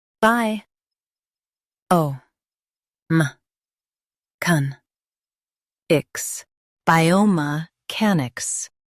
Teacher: Focus on can and make ics quick.